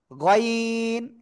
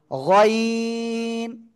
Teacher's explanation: গলার শেষ ভাগ থেকে উচ্চারণ হয় এই অক্ষরটা, হ্যাঁ। গইন, সবাই নুক্তা দিয়ে দেন।